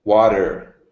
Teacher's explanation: The American T to D